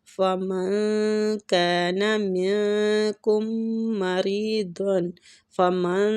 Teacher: فمن نون ساکنہ کا ادھر اخفا کریں گے، اخفا حقیقی ہو رہا ہے